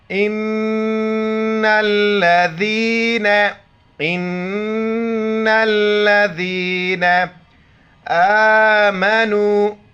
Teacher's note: لام پر شد ہے سختی سے پڑھیں گے، بیچ میں الف کو نہیں پڑھیں گے. ذال کے وقت زبان باہر نکالیں گے اور یا کے ساتھ ملائیں گے. امزہ نون زیر ان، نون لام زبر نل ان لام زبر لا ذال یا زیر ذی نون زبر نا ان الذین آمنوا. · نون پر شد ہیں غنہ کریں گے اور نون کو لام کے ساتھ ملائیں گے. لام پر شد ہے سختی سے پڑھیں گے، بیچ میں الف کو نہیں پڑھیں گے.